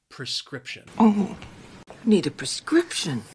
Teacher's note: think the word is a little confusing because of that pre it's not a pre sound it's more of a pr